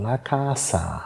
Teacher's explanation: ein einfaches s zwischen Vokalen das wird wenn man richtig Standard italienisch aus Mittel und Süditalien anschaut ja das wird tatsächlich stimmlos aus gesprochen